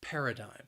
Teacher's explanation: it has three syllables and the stress is on that first syllable paradigm that second syllable again it has that schwa sound but